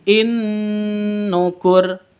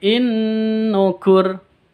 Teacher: Bacaan idgham bi gunnah. Cara bacanya masuk disertai dengung, masuk ke nun disertai dengung. In itu kan masuk, in nukur ya.